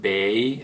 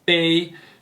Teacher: a very similar word, but not in the third tone, but in the first tone